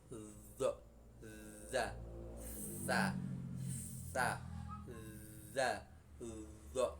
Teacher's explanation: keluarnya dari pucuknya lidah dan pucuknya gigi muka 2 yang atas. Jadi seakan-akan mau digigit ya, Makhraj ini lebih keluar dari makhrajnya shofir.